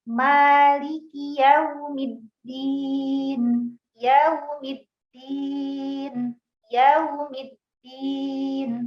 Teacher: untuk wawu sukun itu disempurnakan bibirnya ya, dimonyongkan